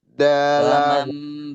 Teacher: Nun bertemu dengan ba. Bacanya famam.